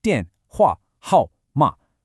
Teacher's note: that series of fourth tones in 电话号码. I want you to think of a sharp downward chop for each one. 电话号码. They have to be distinct and forceful.